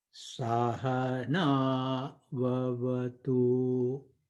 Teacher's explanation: So Sa, it goes low. Sahana, Na goes higher. Vavatu, there is no swara for that.